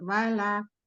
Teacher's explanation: Tidak ke atas suara huruf lam. Lam istifal